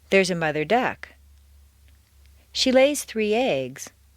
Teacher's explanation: Stress the second word of each phrase.